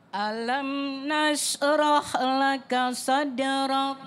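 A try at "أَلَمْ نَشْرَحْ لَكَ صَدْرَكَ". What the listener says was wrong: Jadi sya itu ndak perlu bibir maju. Dia cuma hurufnya di dalam mulut. Jadi alam nashrah. Jangan alam nashrah.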